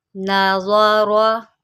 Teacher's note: را جو ہے اس کو موٹا کر کے پڑھیں گے، اور را کے اوپر زبر ہے اس کو بھی ہم موٹا کر کے پڑھیں گے